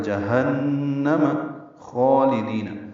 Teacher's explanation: جہنم میں نون مشدد پہ غنہ ہے، ہا اقصی حلق سے من نکالیں گے، جہنم نہیں پڑھنا، جہنم خالدین، جہنم میں ساری زبریں ہیں، فتحات ہیں، جلدی پڑھیں گے۔